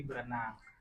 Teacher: Berenang itu kan ada R-nya ada 2, ada kata ber sama renang. Nah, di situ kan R-nya saling ada di situ. Jadi salah satu dari R itu dilepaskan jadi berenang. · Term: pelepasan fonem